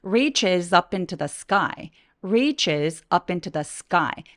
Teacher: 살짝 S 뒤에 오는 크 소리들은 된소리 되기